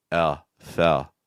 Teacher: It's very common in English to use a sound called a dark L instead of a light L. What that basically means is that when you see an L sound, instead of doing like a L, like you may be doing in your first language, I would personally recommend making a sound that's more similar to like oh.